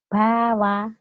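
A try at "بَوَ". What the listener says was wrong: Nggak boleh dipanjangin. Ulangin.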